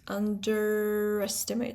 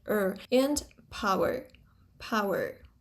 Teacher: Even in this position where it would be just underestimate, in rhotic accents, it's underestimate. So, er becomes rhotic. It's called r-coloring, the coloring of the vowel. So, the vowel, the schwa becomes er er and power, power.